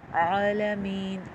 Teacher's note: عین میں بھی آپ کی زبان پیچھے حلق میں پش ہوگی